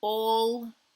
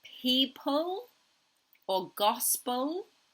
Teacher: this final L is very hard for him it's different to the front L